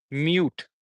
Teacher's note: the vowel sound that we are using here is the long vowel long ooh sound